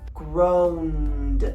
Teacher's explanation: you can hear the vocal cords, so when we add ed to it, it's just d, groaned, okay? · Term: voiced